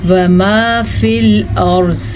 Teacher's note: وقف کا نشان ہے تو ہم زوات کو ساکن کر لیں گے وقف کی وجہ سے، اور را پر پڑھی جائے گی. را ساکن ہے اور ساکن را سے پیچھے زبر ہے، اس زبر کی وجہ سے را پر پڑھی جائے گی. اور زوات تو زبر زیر پیش کسی بھی حالت میں ہو حروف مستعلیہ میں سے ہے.